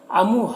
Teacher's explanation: ہا میں جو مد ہے مد منفصل ہے، اسے 3-4 الف کے برابر کھینچ کر پڑھیں گے